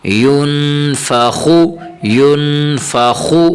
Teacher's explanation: خو پیش خو ينفخو ينفخو خا کو تھوڑا سا موٹا کریں گے